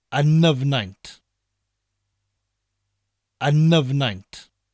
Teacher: the N at the end of un and the N at the beginning of Nyfnaint, roll together as if you're saying one word.